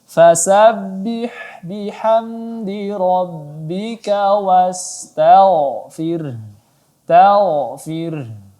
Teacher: ada huruf ghain yang sukun, sebelumnya ada huruf berbaris fathah, maka ditebalkan.